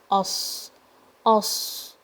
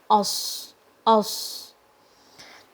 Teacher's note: The back of the tongue is going to be raised, and there will be a little gap between the tongue and the bottom teeth. Okay, the bottom front teeth, there will be a gap between the teeth and the tongue when you say os, os. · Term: Sad